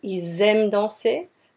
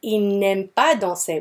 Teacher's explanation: We don't have the liaison between the S and the A anymore because there's an N in between.